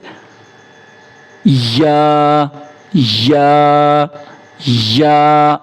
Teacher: زبان کا درمیانہ حصہ اوپر تالو کے ساتھ لگنے سے، یہ آپ کا زبان ہے یا اس کا درمیانہ حصہ ہے، یہ اوپر کا تالو ہے، اس کے ساتھ لگنے سے یا یا یا ایسا کر کے ادا ہوتا ہے۔